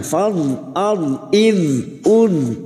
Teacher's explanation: Huruf dhad sukun ini memiliki sifat yang tidak dimiliki oleh huruf lain, yaitu sifat istithala, tepi lidah nempel pada gigi raham atas, boleh kiri boleh kanan